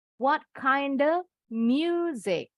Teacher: Kalau cepet off bunyinya jadi e. Kalau agak lambat sedikit bunyi off bibirnya nggak monyong tapi of.